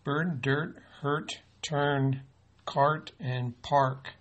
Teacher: you can hear that the R is modifying the vowel sound so are influenced valise is the third major pattern that signals